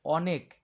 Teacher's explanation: ক এর সঙ্গে আর অ এর উচ্চারণ হয় না